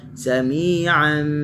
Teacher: Sami'an, tanwin bertemu dengan ba, hukumnya iqlab lah. Kita baca tutup rapat seperti ikhfa syafawi tadilah.